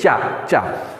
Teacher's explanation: चा बोलते समय आपकी जिह्वा ऊपर तालू से टच करेगी